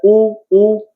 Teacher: ऊ कुठनं आलाय आपण बघितलं की ती कशातून आलाय, आपल्या ओठातून, चंबूसारखा आकार होतोय.